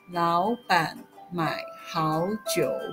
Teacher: the full phrase is pronounced second, third, third, second, third. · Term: third tone